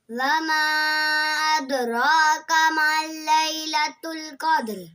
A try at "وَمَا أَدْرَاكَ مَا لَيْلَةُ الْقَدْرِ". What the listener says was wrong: माँ को हल्का सा खींचना है। वमा अदराक मा लैलतुल क़द्र।